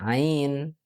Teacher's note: Itu nanti keluarnya ditenggorokan bagian tengah